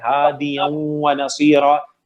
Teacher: ہادین تو نہیں پڑھ رہا ہے, نون کی ساؤنڈ نہیں آ رہی, لیکن اس کا غنہ باقی ہے, ہادیوں ونصیرا, اس لیے اس کو ہم انکمپلیٹ یا ادغام ناقص کہتے ہیں.